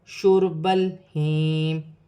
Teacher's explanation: را ساکن سے پہلے پیش ہے تو را موٹی بھی پڑھی جائے گی